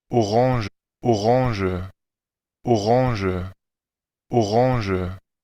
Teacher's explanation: Están usando el schwa todas al final y no una E, no como es.